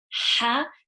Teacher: Ha is from the middle of the throat.